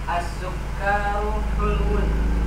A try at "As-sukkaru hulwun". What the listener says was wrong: K-nya pendek.